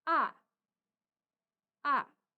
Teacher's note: ton empat kita baca turun atau seperti menghentak